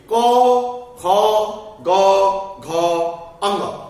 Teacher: यदि आप क बोलेंगे, क की उच्चारण करेंगे, तो देखेंगे कि आपका आवाज कंठ से झंझनाहट की आ रही है। आपका जो कंठ है वहां से कुछ झंझनाहट उत्पन्न होगी। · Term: क वर्ग